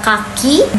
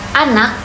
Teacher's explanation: Kalau kita lihat di kata kaki, bunyi K diucapkan dengan jelas di awal kata. Tapi kalau di kata anak, bunyi K berada di akhir kata dan terdengar lebih lemah. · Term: alofon